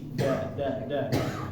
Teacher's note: huruf da yang kita biasa pakai itu digusi da da da padahal seharusnya di tempat